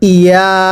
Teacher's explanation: ইয়া এর মধ্যেও এক আলিফ সমপরিমাণ টানতে হবে।